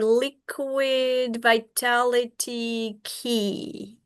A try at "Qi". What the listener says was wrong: Chi, chi. Well, it's spelled QI, but it's pronounced chi.